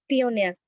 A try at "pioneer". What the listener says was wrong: পায়োনিয়ার not পিওনিয়ার। হ্যাঁ আবার বলো।